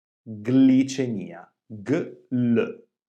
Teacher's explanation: quando abbiamo il nesso formato dalle consonanti G e L più la vocale I all'inizio della parola, generalmente abbiamo due suoni distinti